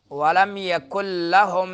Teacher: نون ساکن ہے، اس کے بعد جو ہے یرملون کے حروف میں سے لام آ رہا ہے تو ادغام بلا غنہ ہوگا